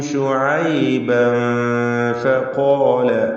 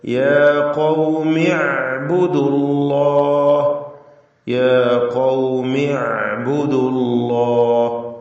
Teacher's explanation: ഖാല എന്നതിൽ ഖാഫിനും അതിന്റെ അലിഫിനും തഫ്ഖീം നൽകി ഉച്ചരിക്കുക, തടിപ്പിക്കുക.